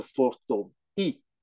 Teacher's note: The transliteration with the alphabet is Y and I at the fourth tone, but the Chinese don't pronounce the Y. So it's the same as you have an E in English, you know, the fifth letter.